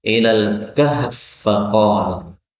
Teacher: ada fa ketemu fa boleh dibaca idgham menjadi ilal kahf faqala